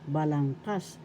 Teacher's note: The third syllable has the accent and you're going to pronounce it as balangkas.